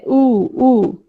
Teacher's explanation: উ, উ, জিভ দেখো একদম পেছনে ভেতরের দিকে চলে গেছে।